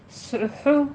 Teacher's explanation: ہونٹوں کو گول کیجیے، صاد کی آواز پور رکھنی ہے سیٹی کی آواز کے ساتھ، اور ہا میں بھی ہمس ہوگی، ہونٹوں کو گول کیجیے۔